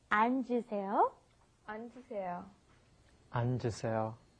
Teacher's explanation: So you've got to go 안, and then the J sound comes up, 앉으세요. And then to read would be 읽으세요.